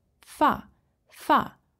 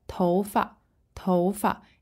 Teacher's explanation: In other contexts, you might see it as fa, fa, fourth tone, but tou fa is kind of a lighter, neutral tone.